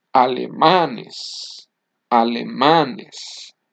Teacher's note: In the first word, the loudest syllable is the last one and the word ends with an N, but in the second word, the loudest syllable is not the last one, it's the next to the last one.